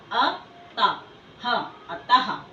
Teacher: यानी कि विसर्ग बिंदुओं का उच्चारण हम हा के रूप में करते हैं